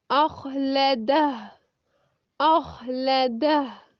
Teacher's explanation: जहाँ पे खौ साकिन हालत में होगा वहाँ आवाज़ जारी रहेगी, यानी जिस हा खौ पर जिस्म आ जाएगी वहाँ आवाज़ जारी रहेगी।